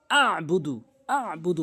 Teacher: আবুদ আবুদ আইনের উচ্চারণ আনতে হবে অনেকেই আইনের উচ্চারণ আনেই না আইনের উচ্চারণ হচ্ছে হলকের মাঝখানে